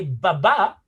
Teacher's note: the difference between these two bilabial consonant is that one uses the vibration of the vocal chord which is the b